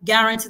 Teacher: Guarantee the stress is on the last syllable.